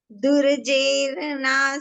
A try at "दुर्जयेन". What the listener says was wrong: दुर्जे नहीं, दुरर्जयेन दुर एक तो रह पूरा है और एक आधा रह या के ऊपर है। ऊपर रह है वो इधर ही बोलेंगे ना आधे अक्षर से पहले। दुरर्जयेन बोलेंगे ना, दुरर्जयेन।